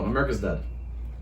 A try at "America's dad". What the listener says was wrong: America's dad. I think you said dead.